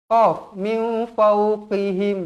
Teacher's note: Huruf qaf pastikan tebal